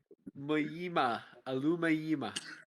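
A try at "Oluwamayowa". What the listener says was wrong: It's a wa at the end. It's not even a ma.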